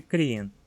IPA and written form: kriːn (krien)